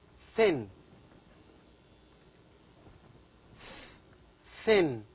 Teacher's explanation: You have to say, you have to make your tongue, the tip of the tongue, touches the upper front teeth to produce thin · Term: voiceless dental sounds